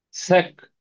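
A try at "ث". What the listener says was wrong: ஆ சக்கல் நாக்கு வெளியே வரணும். சக்கல்ல. சக்கண்டா நாக்கு வெளியே வராது. இரண்டு பல்லுக்களுக்கும் இடையால லைட்டா நாக்கு வெளியே வரணும். லைட்டா வரணும். ஆ காற்று தான் சவுண்டா வரணுமா?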